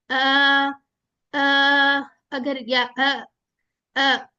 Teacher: हमजा का कहां मखरज है ये अक्स उल हलक ठीक है यानी वॉइस बॉक्स के करीब